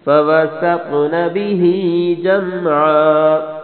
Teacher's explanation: سین کو بریک، تو کو موٹا اور تو پہ کلکلا کرنا ہے ، وقف آخر میں اسی طرح کرنا ہے۔ فوسطن به جمعا